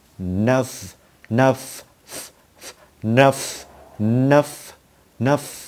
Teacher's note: khi mà mình bật hơi ra có cái cảm giác giống như là chữ V nó ra, chứ không phải là chữ F nữa các bạn. Chứ không phải là âm F nó ra, mà âm V, nơf, nơf.